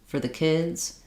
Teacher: my for became more of a fur uh again with a little schw here that vow gets reduced